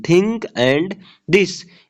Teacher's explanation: in these sounds the tip of the tongue is placed against the upper front teeth, creating a unique airflow pattern